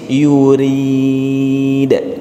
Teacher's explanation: Di ayat ke-16 ini ra-nya baris bawah. Maka ra di sini dibaca tipis. Yurid. Turunin lidah kita.